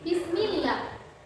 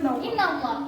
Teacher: harokat kasroh bertemu dengan huruf yang berbentuk Allah seperti ini, dia bacanya tipis